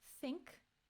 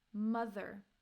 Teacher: we have the voiceless th as in think and the voiced th as in mother